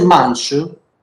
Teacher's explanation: In the Baksese manche, beside the Francavillese voiceless postalveolar affricate, we have the Cegliese final schwa